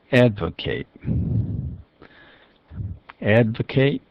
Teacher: that's a verb form and it stresses the first syllable